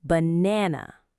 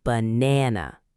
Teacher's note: It has 3 syllables, ba-na-na. Notice the middle syllable is stressed. It's longer and stronger.